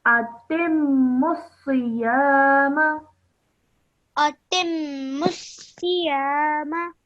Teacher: make sure that you straight away join the ta to the meme. Don't hold the sound of t in your mouth.